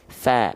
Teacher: Fa, pastikan dia tipis, mengalir nafasnya. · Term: kadar tipis